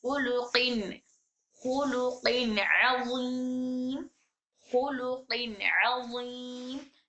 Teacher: नून की आवाज आ रही है, इसमें नून साकिन छुपा हुआ है, तो वहां पर नाक में आवाज जा रही है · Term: रेगुलर गुन्ना